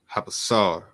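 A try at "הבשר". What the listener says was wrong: That was a shah. So Habashar and then Ashar.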